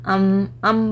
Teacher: दोनों होंठ मिल रहे हैं मेरे, पकड़ लूँ तो this is called I am stressing hard, right. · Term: गुन्ना